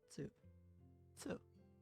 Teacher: The second exception is Tsu, which adds an S sound and is pronounced with less emphasis on the T.